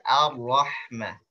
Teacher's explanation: A-nya tipis, ro-nya tebal. Jangan Ar-Rahma, tapi Ar-Rahma.